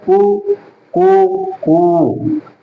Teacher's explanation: कु छोटी ध्वनि निकली, कु उससे बड़ी निकली, कु ये लंबी ध्वनि निकली। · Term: ह्रस्व स्वर, दीर्घ स्वर और प्लुत स्वर